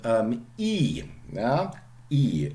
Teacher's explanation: It's the most extreme palatal vowel, front vowel, because your tongue cannot be higher up and your tongue cannot be more front than for E.